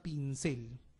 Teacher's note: el énfasis está en la última sílaba